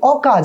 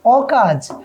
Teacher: এই নাবোধক শব্দটা হওয়ার কারণে স্বরে ওটা বিবৃত হয়ে যাবে